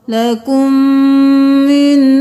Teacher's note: میم کے ساتھ میم مل گیا، میم مشدد ہے غنہ ہوگا